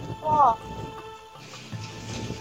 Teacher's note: huruf ro ketika berharokat fathah hukum tajwidnya adalah ro tafkhim atau dibaca tebal